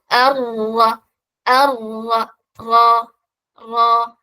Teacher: നാവ് ടച്ച് ചെയ്യുന്നുണ്ട് പക്ഷെ എന്താവുന്നുണ്ട് ചെറിയൊരു സ്പേസ് ഉണ്ടാവും അതിലൂടെയാണ് റ പറയുമ്പോൾ സൗണ്ട് പുറത്തേക്ക് വരുക